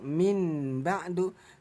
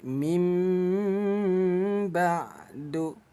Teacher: Nah, cara bacanya nun ini kita tukar menjadi bunyi M. Jangan dibaca min ba'du, tapi mim ba'du. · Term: hukum bacaan iklab